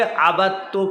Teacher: عبدتو میں دونوں ایک ہی مخرج کے، دونوں تا ہے نا، دال اور تا دونوں ایک ہی مخرج کا ہے، اسی لیے دال کو تا میں ادغام کر دیں